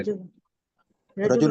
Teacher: را جو ہے وہ را پہ حرکت ہے زبر کی، موٹا پڑھا جائے گا، اور جیم کو ہم پڑھنے کے لیے اپنی زبان کو اوپر تالو سے لگائیں گے، اور لام جو ہے وہ تنوین ہے، نون ساکن کی آواز دے گا۔